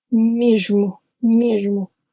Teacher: the O in mesmo should have been U, short, almost inaudible.